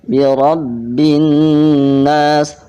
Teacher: ra-nya harus dibaca tafhim tebal karena ra di sini berharokat fathah